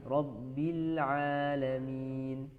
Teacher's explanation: Lamnya jangan dilepas dulu. Rabbil ya, langsung ain.